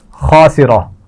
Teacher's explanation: خا بھی موٹا پڑا جائے گا اور را بھی موٹی پڑی جائے گی